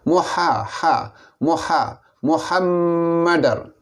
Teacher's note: ha ini makhrajnya di pertengahan halqum